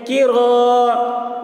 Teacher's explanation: کی، را الف زبر را، الف سے پہلے زبر ہے، الف مدہ ہوا، اس لیے الف مدہ کو ایک الف کے برابر کھینچ کر پڑھیں گے